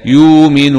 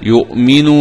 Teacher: بإبدال الهمزة الساكنة واوا وقفا ووصلا